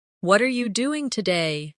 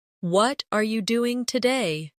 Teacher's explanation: The stress usually falls on what and doing.